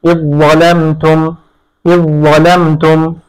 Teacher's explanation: এখানে জাল সাকিন পরে জ আসছে, তাহলে জালকে জয়ের মধ্যে ইদগাম করতে হবে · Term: ইদগামে মুতাজানিসাইন